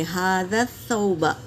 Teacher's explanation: ھذا ذال کو سا میں ملائیں گے اور سا دونوں دانتوں کے بیچ میں زبان کی ٹپس ڈال کر ادا کریں گے